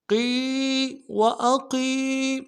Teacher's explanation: قوف کو موٹا کریں گے، یا مدہ ایک الف مقدار میں کھینچیں گے